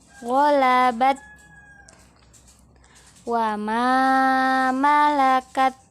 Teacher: Ma ini kita panjangkan karena bersambung dengan alif.